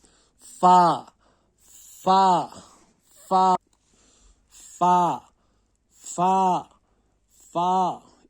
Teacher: सामने के दांत नीचे के अंदरूनी गीले होंठ पे रखने से अदा होता है